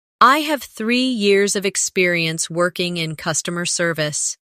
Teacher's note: Emphasize three years and customer service to highlight your strengths.